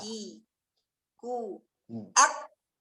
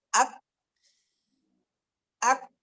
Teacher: Hams di kaf itu nampak sekali ketika dia sukun. Ketika dia tidak sukun, tidak nampak.